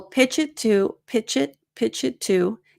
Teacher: because of the linking with pitch it I find that I don't reduce to as much